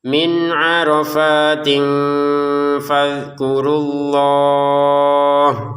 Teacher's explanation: nun sukun bertemu dengan ain. Baca dengan jelas ya